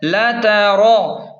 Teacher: لام زبر لا، تا زبر تا، را زبر را. را کو موٹا پڑھیں کیونکہ را پر زبر ہے